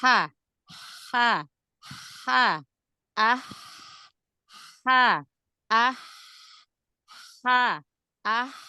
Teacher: dengan ha dari tenggorokan bagian tengah tetapi titiknya enggak sama banget huruf Ain dia lebih turun lebih dalam lebih ke bawah gitu ya dibanding dengan huruf ha Kalau ha dia lebih ke atas ha ha Ha ah ha